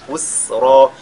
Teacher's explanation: Et au niveau de yusra, on fait maddul iwad. C'est yusra, mais en s'arrêtant, on fait maddul iwad.